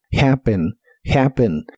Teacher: La H se pronuncia como una J suave de español y aunque tiene una doble P, se pronuncia como una P normal